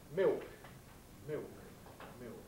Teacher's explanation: What happens in London speech, for example, in Cockney, is that we get a kind of org vowel. Thus, in a word like milk, dark L, we get instead a kind of new diphthong, an ill diphthong, thus milk, milk, milk.